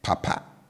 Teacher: will always have a low tone on both syllables